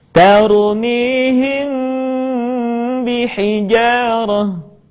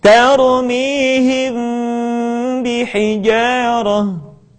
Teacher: Mim mati ketika bertemu dengan huruf ba, bibir tidak sempurna rapat, melainkan agak direnggangkan sedikit.